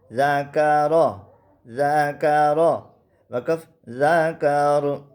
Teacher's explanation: یہ را وقف کی حالت میں بھی موٹا ہوتا ہے